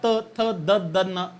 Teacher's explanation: तुमची जीभ पटकन मागून दाताला लागते. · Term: दंतवर्ण